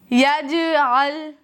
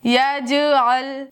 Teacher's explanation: لام پر میں قلقلہ نہیں کر رہی ہوں، جیم پر کر رہی ہوں